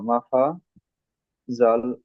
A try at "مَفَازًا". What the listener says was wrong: এখানে দুটো সব এক আলিফ করে টান হবে না? মাফাজা। আলিফের ডান দিকে যাবার আলিফ মাদ্দা। আয়াতের শেষে দু জাবার, এক জাবারকে বাদ দিয়ে এক আলিফ টান দিয়ে পড়তে হবে।